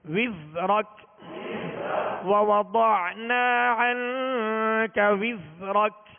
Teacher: زا کو سیٹی کی آواز میں پڑھیں گے مگر باریک پڑھیں گے